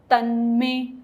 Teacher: न पे जीभ जहां हमारी लगी, क्योंकि न क्या है, त थ द ध न, दंत्य साउंड है, ठीक है, तो वहां पर दांतों के पीछे जीभ वहीं रहेगी, तन, और उस वहीं से ही में बोल देंगे, तन्मे, ठीक है।